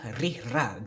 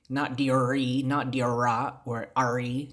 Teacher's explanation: Don't retroflex it. You gotta roll the R's, not retroflex it. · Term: rolling of the R